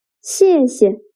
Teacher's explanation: The second character is pronounced with a neutral tone.